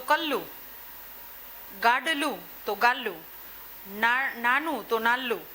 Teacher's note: ક્યારેક ડ ને સ્થાને ન નો પણ ઉપયોગ કરે છે ને લ નો પણ